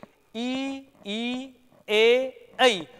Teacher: ध्यान से उच्चारण करिए इनको बोलिए ई ई ए ई तो जीभ का अग्र भाग ऊपर उठ रहा है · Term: अग्र स्वर